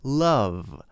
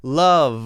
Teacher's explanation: We have to make the V at the end. Love. And we should be able to continue it long if we need to.